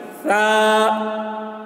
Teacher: सामने की जो दांत होती है वहाँ पर जबान की नोक को लगाने से सा अदा होता है। सा, देखिए आवाज, अगर सा बोल दिए तो ये गलत हो गया, सा नहीं बोलेंगे, सा सा, ये सा की आवाज़ है, सा, इस तरीके से।